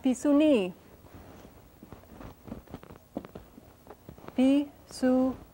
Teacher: It's pronounced Pisuni. Pisu, accent on this last syllable, ni, and a pretty long I there. Pisuni, that's the word for skunk.